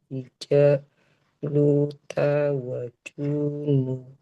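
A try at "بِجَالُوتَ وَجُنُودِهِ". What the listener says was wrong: Nah, jimnya nggak boleh panjang.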